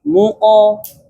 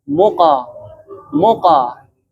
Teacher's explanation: satu condong ke dhammah, satu condong ke fathah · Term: qalqalah